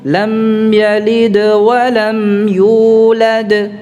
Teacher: Maksudnya lebih tampak di sini karena tidak ada huruf lain yang hendak diucapkan. Karena tidak ada huruf lain setelahnya, maka dia suara qalqalah itu adalah suara terakhir. Makanya lebih tampak.